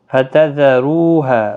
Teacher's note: رو واو مدہ ہے، ہا الف مدہ ہے، 1 الف کی مقدار کے برابر کھینچ کر پڑھیں گے۔